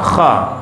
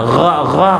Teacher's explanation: yang satu ditekan nafas yang satu tidak ditekan